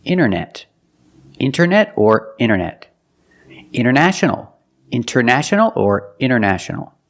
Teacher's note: When you see NT a lot of times you don't hear the T